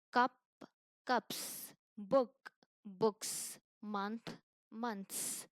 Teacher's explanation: sound like a hissing of a snake it's voiceless that means your vocal cord doesn't vibr like if you pronounce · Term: s sound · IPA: /s/